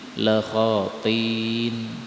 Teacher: Ayat 91 la khati'in, hamzah boleh dihapus menjadi la khatin